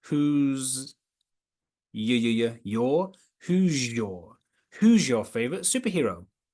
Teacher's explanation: that's coalescence when the s and y come together to make j.